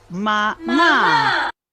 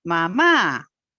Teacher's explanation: La segunda sílaba es la que está acentuada, mamá, y va de alto a bajo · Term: tono descendente